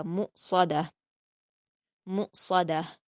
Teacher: میم پر حرکت ہے اور اس کے بعد حمزہ پر جزم ہے، میم کو حمزہ کے ساتھ ملا کر جھٹکے کے ساتھ پڑھا جائے گا